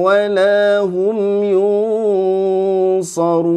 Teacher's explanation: Wala hum ikhfa'nya tebal karena menghadapi huruf apa ini? Shad ya. Suara ikhfa'nya lewat hidung dan mulut.